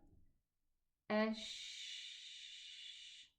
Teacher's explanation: It belongs to the softness because the sound is running.